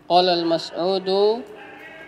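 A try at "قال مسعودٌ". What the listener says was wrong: Qala Mas'udun. Tidak ada alif lamnya, tidak ada. Tidak ada alif lamnya. Qala Mas'udun.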